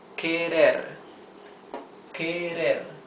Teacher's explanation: the R is the soft sound of the R, because it's not at the beginning of the word, and because it is not doubled